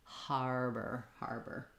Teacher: you want to use that reduced er sound because it has first syllable stress so har is stressed and · it has first syllable stress so har is stressed and bur is short and if it's hard to put the h sound on exaggerate · har is stressed and burr is short.